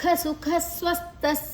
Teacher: ಸುಖ ಆದ ನಂತರ ವಿಸರ್ಗದ ಉಚ್ಚಾರಣೆ ಸ, ಮುಂದಿನ ಅಕ್ಷರ ಸ ಇದೆ. ಸ್ವಸ್ಥ ಸ ಮತ್ತು ವ, ಸ ಮತ್ತು ಥ ಎರಡು ಕೂಡ ಅಲ್ಲಿ ಸಂಯುಕ್ತ ಅಕ್ಷರಗಳು.